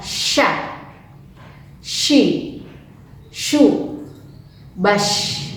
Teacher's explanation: Ketika mengucapkan huruf ini, ya, huruf sya, itu ada penyebaran angin di dalam mulut